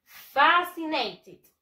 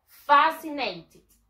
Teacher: The stress syllable, la mayor fuerza de voz está en la fa